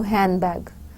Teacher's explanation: So the ending, that is with the d sound, would be omitted. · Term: elision